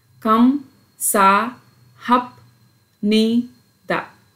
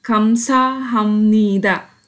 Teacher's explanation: When the bachim ba mixes with the next block initial na, it sounds ma.